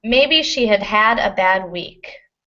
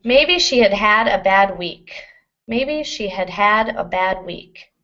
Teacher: This first had, the auxiliary had, is almost not pronounced. In fact, that's why we have the contraction she'd. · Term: word stress